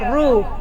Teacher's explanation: را کو موٹا پڑھنا ہے، اس کے اوپر پیش ہے رو. ہوول اب تارو، اب تر، اب تر.